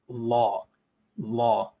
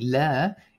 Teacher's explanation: remember that you want to make it a bit heavier so this l was the regular light one l and now i want you to make it a bit heavier